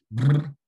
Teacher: There's a voiced bilabial vibrant